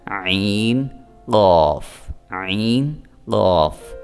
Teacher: عین حروف حلقی میں سے ہے، آپ نے اس کو حلق سے ادا کرنا ہے۔